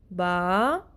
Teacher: الف منہ کے خالی حصے سے ادا ہوتا ہے · آ کی ساؤنڈ منہ کے خالی حصے سے ادا ہو رہی ہے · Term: الف کا مخرج